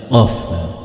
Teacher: Qaf adanya di tenggorokan paling dalam dan tajam.